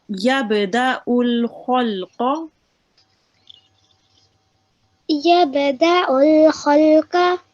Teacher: the kha and the qaf, they're both thick letters, and you round your mouth with it when you're reading them